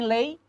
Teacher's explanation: Eu tenho um encontro de uma vogal o e forte com uma semivogal numa mesma sílaba mas de sonoridade fechada